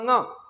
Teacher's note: वे वर्ड जिन्हें उच्चारित करते समय मुख एवं नासिका दोनों का उपयोग होता हो नासिक्य वर्ड कहलाते हैं। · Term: अनुनासिक